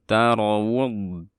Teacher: Alirkan suara dotnya karena dia bersifat rokhawah, dan dari situ kita harus mempraktekkan sifat istitalah, yaitu membuat suaranya memanjang.